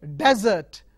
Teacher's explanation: You take another example, desert, desert as a noun, desert. The stress is on the first syllable.